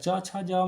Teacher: च छ ज में जितना भी होता है वो तालू वाला होता है